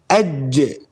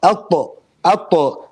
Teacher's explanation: I'm doing the qalqala at the end. Okay, this qalqala makes the jim become more apparent. Same with the qalqala and dal.